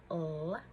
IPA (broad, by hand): l